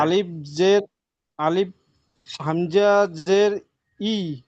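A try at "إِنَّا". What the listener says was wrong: হামজা জের নয়, নুনের উপর তাসদিদ আছে। নুন আলিফ জবর না। নুন জবর যা হয় না, নুন জবর না হয়।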